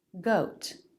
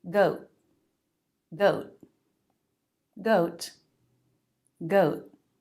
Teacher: the ending T pronunciation can be a true T, goat, or a stop T